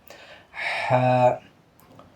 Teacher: ہا جب پڑھیں گے تو حلق کے درمیان سے پڑھیں گے آپ